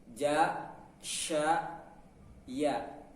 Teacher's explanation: pertengahan lidah bertemu dengan langit-langit atas. Ya, pertengahan lidah ja, sya, ya.